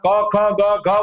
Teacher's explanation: ચાર વર્ણ એ કંઠે એટલે કે કંઠમાંથી જ નીકળે